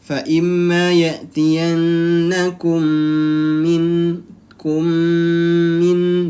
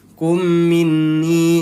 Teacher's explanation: Apabila mim sukun bertemu dengan huruf mim, yaitu maka dinamakan idgham mimi. Cara membacanya juga dia ditahan 2 harokat atau ditahan 2 ketukan.